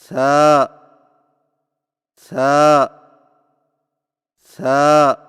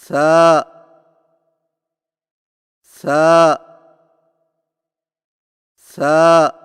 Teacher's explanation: ثا کی ادائیگی میں زبان کی نوک کو سامنے والے اوپر کے دو دانتوں کے اندرونی کناروں سے نرمی سے لگا کر باریک آواز میں پڑھیں، یعنی سا سا سا۔